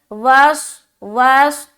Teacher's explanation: स्वाद मोटा अदा होगा, सीटी की आवाज़ भी आएगी थोड़ी, क्योंकि स्वाद हर्फ सफ़ीरिया के अंदर आता है और सीन भी सफ़ीरिया वाला हर्फ है, तो दोनों में सीटी की आवाज़ आती है।